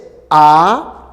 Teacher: articulatorias fíjate la articulación de la a cuando dices a ya cuando dices a la lengua no va hacia delante ni hacia atrás se queda en medio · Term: vocal media